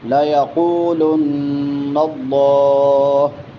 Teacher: نون مشدد ہے یہاں پہ غنہ ہوگا · قاف موٹا ہوگا اور اس کے بعد واو مدہ ہے تو اس کو لمبا کر کے پڑھیں گے